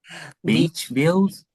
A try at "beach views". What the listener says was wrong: Beach views. Not view, it's beach views. Beach views.